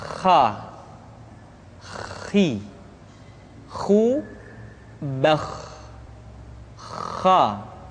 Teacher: pengucapan huruf kha persis terdengar seperti orang yang tidur dalam keadaan mengorok.